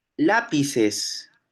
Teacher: esa p es una oclusiva bilabial